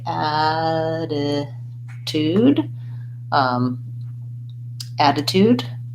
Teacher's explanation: And I would say the most important elements to pay attention to are that the first T, attitude, is a flap, so it sounds more like a D. And the second T is the beginning of the syllable, so we stay with a T sound, tude.